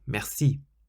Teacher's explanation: the word merci means thank you or thanks, and you stress the last syllable, merci. So how would you say in French, yes, thank you, it's delicious?